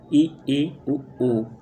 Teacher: संवृत, जिन स्वरों के उच्चारण में मुख द्वार लगभग बंद रहता है, जैसे ई, उ।